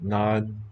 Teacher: It's a geminate murmured J sound.